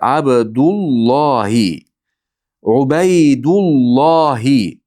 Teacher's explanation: ikkita kalima bir-biriga qo'shib o'qilganda o'rtasida bir vav orttirib o'qilinadi. Abdullo bu yerda xuddi vov bek o'qilinadi.